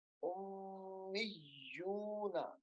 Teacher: حمزہ کو میم کے ساتھ ملانا ہے، میم مشدد ہے، پھر میم کو اس یا کے ساتھ ملائیں گے کیونکہ یا بھی مشدد ہے، دونوں لفظوں کو سختی سے پڑھیں گے.